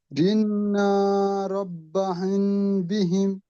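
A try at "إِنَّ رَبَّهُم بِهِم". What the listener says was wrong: জি, ইন্নাটা টান দেবেন না, ইন্নাটা টান নেই।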